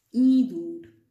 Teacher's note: In some dialects in Bangladesh, some people say indur, which is not used in the standard Bangla. In the standard Bangla, this is just a slight nasalization and you will have to say idur.